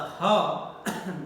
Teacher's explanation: Ha is entirely pronounced here in the glottis, here in the glottis, within the glottal. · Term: glottal sound